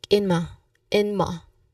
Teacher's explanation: you slightly reduce the in at the beginning and then make it sound like inma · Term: link sound